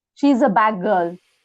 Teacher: Assimilation of D to G.